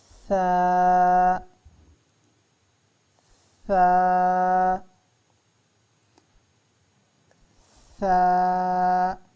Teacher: زبان کی نوک اوپر والے دانتوں اور نیچے والے دانتوں کے درمیان میں رکھیں تو ثا ادا ہوتا ہے۔ ثا، زبان کی نوک اوپر والے دانت اور نیچے والے دانتوں کے درمیان میں رکھیں گے تو ثا ادا ہوتا ہے۔